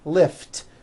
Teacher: lift ends with an unvoiced t